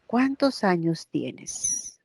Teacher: cuando haya pronombres interrogativos la inflexión tonal es hacia abajo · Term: inflexión descendente